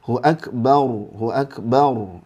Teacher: ro sukun itu kalau diawali fathah itu tebal